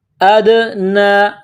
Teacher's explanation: دال ساکن ہے تو دال پر قلقلہ کریں گے